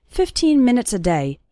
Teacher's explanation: the last two syllables of minutes become very small and just serve to connect with the word day